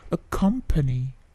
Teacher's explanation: P-nya sedikit plosive, tidak plosive yang terlalu besar, tetapi plosifnya ada ya. Accompany, bukan accompany.